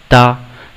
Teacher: हमारी जिह्वा हमारे दांतों से जब स्पर्श करती है तब ता की ध्वनि निकलती है